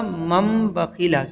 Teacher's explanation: تو اس نون ساکن کو میم ساکن سے بدلیں گے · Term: اقلاب